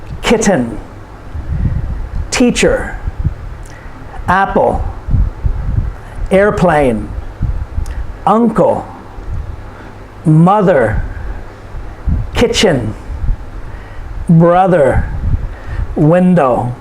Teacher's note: These are nouns, and these are 2-syllable nouns, and the stress is put on the first syllable.